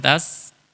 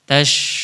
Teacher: Kalau di ujung lidah namanya tas. Tapi kalau di tengah lidah namanya tash.